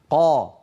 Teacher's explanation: القاف والطاء شديده مجهوره